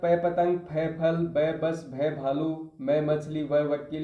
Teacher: यह दोनों ओष्ठों को मिलाने पर बोले जाते हैं। इसलिए इसको ओष्ठ व्यंजन कहा जाता है।